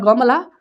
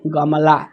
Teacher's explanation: ग के बाद अ का उच्चारण है लेकिन एम के बाद जो है अ का उच्चारण नहीं है